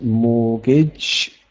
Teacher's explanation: there is no T sound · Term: silent T